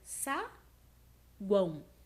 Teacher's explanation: Semivogal, vogal, semivogal. O fraco, a forte, o fraco. As três juntas na mesma sílaba formam um tritongo.